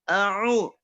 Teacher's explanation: Hamzahnya tidak ditekan, Ainnya harus ditekan.